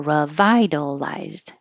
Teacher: the vowel in the stressed syllable is I, revitalized